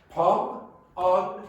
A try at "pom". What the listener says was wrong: See, it doesn't sound clear to me that m, especially the first one.